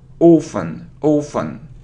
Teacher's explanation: So without t, so we normally say it so.